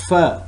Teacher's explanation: its voiced labiodental fricative sound